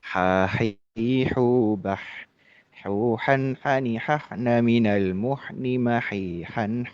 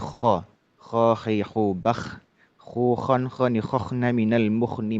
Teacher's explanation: Huruf ha itu bersih ya, tidak tersela dengan ngorok atau apa. Karena memang ee huruf ha itu pengucapannya adalah atau tempat pengucapannya itu adalah tenggorokan tengah, bagian tengah itu ya.